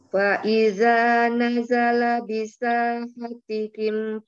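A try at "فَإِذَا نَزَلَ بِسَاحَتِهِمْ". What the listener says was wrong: Afwan, huruf dzalnya jangan hampir sama dengan Tebalan. Jadi fa iza ujung lidah bertemu dengan ujung gigi sisi depan. Fa iza ya. Jadi seperti tergigit gitu. Jadi beda bunyinya nanti, enggak sama dengan huruf zai.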